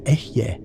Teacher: The pronunciation is Ehyeh, with the emphasis on the first syllable.